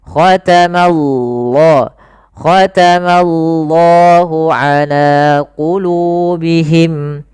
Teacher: Nah, di sini lafal Allah dengan lafal yang tebal lamnya. Maka di sini kita namakan dengan lamu at-tafkhim.